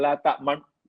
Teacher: baca la ta'manu, tapi dhammahnya itu jangan lepaskan. Hanya la ta'man. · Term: ismam